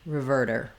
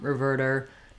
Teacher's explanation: I don't need a strong D there. I don't want reverter, but rather just lifting up with my voice on, reverter, nice light flap sound. Yeah, not easy to do that erder.